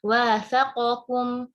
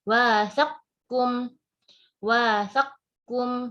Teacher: Kita akan mensukunkan harful qaf, yaitu huruf yang pertama, lalu kita step kedua baru mengidghamkan qaf ke huruf kaf.